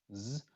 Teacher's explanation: it's a Z sound, z, and then it changes to an unvoiced fricative, an S sound, miles. And so you get that little hiss of S at the end.